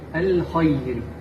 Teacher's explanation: حرف الخاء يجب أن يكون مفخم.